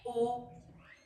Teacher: तो मैंने मुंह को तो गोल किया लेकिन जो मेरी हवा है from my lungs is coming out without any restriction. हाँ, आप जबान की पोजीशन ऊपर नीचे कर सकते हैं लेकिन जबान हवा को रोकेगी नहीं।